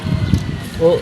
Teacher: vokal yang dihasilkan dengan lidah di bagian belakang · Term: bunyi belakang